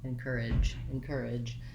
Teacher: you want to make sure that your voice is on j · that vowel a little longer before your sound so in courage i have the length on my second stressed syllable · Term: j sound